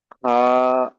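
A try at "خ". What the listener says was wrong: খা নয় ভাই আমার, খ, মুখ গোল হবে, খ,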